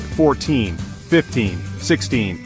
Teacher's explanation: The stress in these words falls on the second syllable